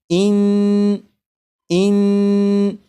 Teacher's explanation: जब आप पढ़ेंगे इन तो ज़बान तालू से लग रही है।